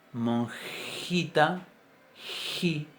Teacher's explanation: esa J es una J bien palatal, bien palatizada